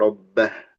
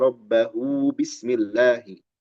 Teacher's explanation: Tapi kalau kita sambung ke basmalah surat berikutnya, dzalika liman khasyiya rabbahu bismillahi. U-nya jadi ada mad 2 harokat.